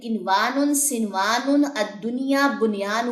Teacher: ان میں نون ساکن کا واو یا میں ادغام نہیں ہوگا، بلکہ یہاں پہ ہم اظہار کریں گے